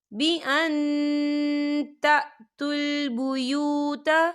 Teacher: یہاں دیکھیں نون ساکن ہے اور نون ساکن کے بعد تا آ رہا ہے، تو یہاں پر اخفا ہوگا. ہم نون ساکن کی آواز کو ناک میں چھپائیں گے.